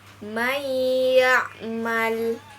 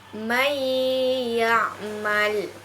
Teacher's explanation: nun mati bertemu dengan huruf ya maka dibacanya melebur ke huruf setelahnya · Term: hukum idgham bighunnah